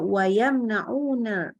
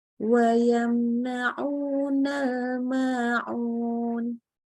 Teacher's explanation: mim dibaca jelas tanpa menambahkan gunnah lagi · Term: izhar syafawi